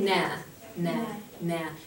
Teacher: You can feel like your tongue kind of goes up and closes against the roof of your mouth so that you have to pass some air through your nose, through your nasal cavity, and so that's what makes that sound. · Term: nasal sound